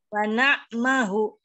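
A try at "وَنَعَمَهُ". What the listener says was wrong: Wa na'a. A-nya dibaca fathahnya.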